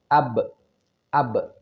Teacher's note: maka si bibir ini segera dilepaskan atau dibuka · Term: qalqalah sugro